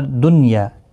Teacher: یعنی نون ساکن کو ظاہر کر کے پڑھا جاتا ہے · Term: اظہار مطلق